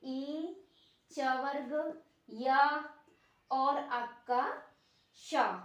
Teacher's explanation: यानी ई च वर्ग, या और आपका श, तालव्य श, इस वाले सा का हमारा उच्चारण तालु से होता है